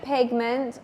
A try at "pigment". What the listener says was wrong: Pigments. Non dice proprio una P. Pigment. Pigment. Sembra una EI, IE, pigment.